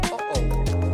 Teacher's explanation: the glottal stop, as in the little catch of air in the throat between and o in uh-oh.